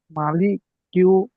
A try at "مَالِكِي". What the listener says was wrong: মা টান হবে, মালিকি।